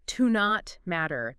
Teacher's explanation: You might hear it almost like one word, like to not matter. The T in not kind of blends into the M. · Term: squished together phonetically